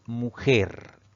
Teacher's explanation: la mayor fuerza de voz recae en la última sílaba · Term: palabra aguda